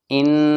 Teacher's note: نون کے اوپر تشدید ہے، غنہ ہوگا